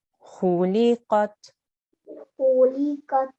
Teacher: make sure we don't do a jerk at the end with the ta. So it's a very soft qat.